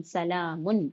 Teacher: بِإِذْنِ رَبِّهِم مِّن كُلِّ أَمْرٍ سلام، آگے ہے سین زبر سا، لام کھڑا زبر لا، سلام، میم دو پیش من، سلام، سین پر زبر کی حرکت ہے جلدی پڑھیں گے، لام پر کھڑا زبر ہے الف مدہ کے برابر